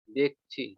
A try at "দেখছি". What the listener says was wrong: একটু ৬ টা একটু কোথাও গিয়ে লাগছে। ৬ টাকে আরেকটু ক্লিয়ার করেন।